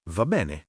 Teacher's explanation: con la e aperta in tutte e due le parole · Va bene, non ve. La B è marcata, la N singola veloce.